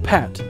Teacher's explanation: You should feel a puff of air after the p in pat, but not so much after the p in spat. Placing a sheet of paper in front of your mouth while you pronounce these words can make the effect visible. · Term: aspirated